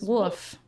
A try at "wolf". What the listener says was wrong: say wolf. Like there's an L in there. L.